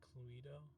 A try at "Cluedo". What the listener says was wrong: Actually, the funny part is, you pronounced the E, but it's supposed to be pronounced Cluedo.